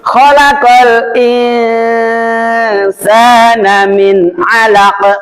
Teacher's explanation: nun mati bertemu ain dibaca idhar halqi idhar itu jelas enggak boleh dengung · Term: idhar halki